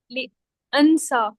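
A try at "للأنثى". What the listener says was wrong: लिल उनसा पेश है उस पे भी।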